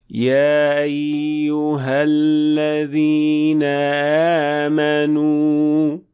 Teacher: आवाज की डोरियां यानी वोकल कॉर्ड्स मुकम्मल तौर पर बंद नहीं होते जिसके नतीजे में हमजा तकरीबन सुनाई ही नहीं देता